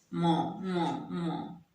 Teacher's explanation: और ये म जो है ओष्ठ और नासिका हो गया, म ओष्ठ म बोल के देखिए, म नाक से भी मुंह से भी, दोनों होठों की सहायता से भी।